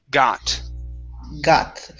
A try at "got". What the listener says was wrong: make sure when you're pronouncing your t's that your tongue is not touching your teeth you don't want to say got